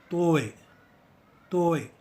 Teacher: अपने ज़ुबान को चपटा करके, यानी कि फ्लैट करके, अपने मुंह के ऊपरी भाग में लगा दीजिए, यानी कि सख्त तालू में लगा दीजिए। याद रखिए कि अपना ज़ुबान को TH स्थिति में ना ले जाएं और अपने ज़ुबान को दांतों के अंदर ही सीमित रखें।